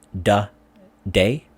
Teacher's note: especially in the TH sound, the or they, it often is pronounced as a D sound, as in da, day.